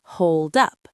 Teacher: And the D in hold connects to the U in up. Hold up. It almost sounds like two words instead of three.